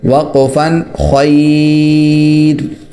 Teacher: وقف کی صورت میں یہاں پر را باریک ہوگی، وجہ اس کی یہ ہے کہ اس سے پہلے یا ہے